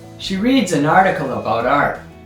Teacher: This one's a little bit tricky because there's a long section of weakly stressed, quite rapid words at the beginning. And the first strong stress is article. The second strong stress is art.